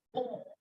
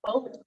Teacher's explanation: this kind of nasalized vowel, where you don't ever, like your tip of your tongue never reaches that palate above